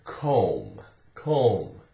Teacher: all you have to do is just drop the sound of the B and you're going to pronounce it correctly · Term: silent